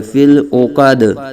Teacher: آگے وقف کی وجہ سے دال ساکن ہو رہا ہے تو قلقلہ خوب ظاہر کریں گے